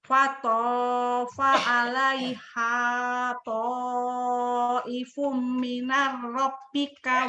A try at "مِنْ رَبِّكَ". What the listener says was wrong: jadi minar? mirrobika. Ini huruf mati. Terus ini hanya hadada.